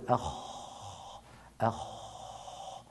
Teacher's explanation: أخ خا خو خي أخ، وهو حرف مهموس، مهموس يعني يجري معه النفس وعند نطقه لا يهتز اللوتران الصوتيان. لو وضعنا هاتان الإصبعان هنا أو هاتين الإصبعين هنا نقول أخ أخ، يجب أن لا نشعر باهتزاز تحت إصبعينا.